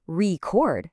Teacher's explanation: if I say record and put the stress on the back, now it's a verb. It's an action.